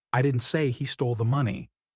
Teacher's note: You're stressing say to show doubt